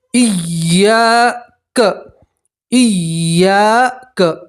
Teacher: یا کے ساتھ الف مدہ ہے تو الف مدہ میں بھی ایک الف کے برابر کھینچ کر پڑھتے ہیں